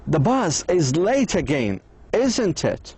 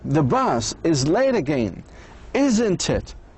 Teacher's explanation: One person begins with a tag question with a voice going down at the end.